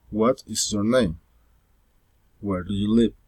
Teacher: Friendly interest, politeness, rising intonation.